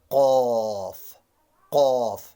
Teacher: قاف بھی حلق کا اوپر والا حصہ منہ کی جانب والا